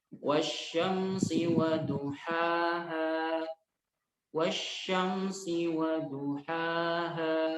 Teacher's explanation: Ha dan ha-nya 2 harokat. Harus 2 harokat dan tidak boleh lebih. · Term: mad asli